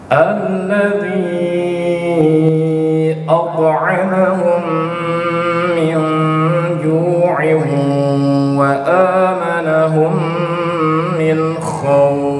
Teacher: Kalau ketika bacaan itu ghamdi gunnah, maka dia dengung. Dengungnya itu sampai ke rongga hidung, ke hidung. Ini ada at'amahum, dengung.